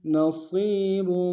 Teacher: صاد کو موٹا ادا کرتے ہوئے یا کے سامنے آنا ہے، یا مدہ ایک امتداد میں کھینچیں گے